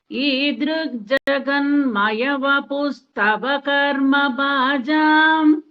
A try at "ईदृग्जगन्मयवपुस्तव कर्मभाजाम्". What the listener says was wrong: அந்த மையாக்கு தவக்கு தனியா ஒரு ஜர்க்கு கொடுக்குறீங்க, அது கொடுக்க கூடாது.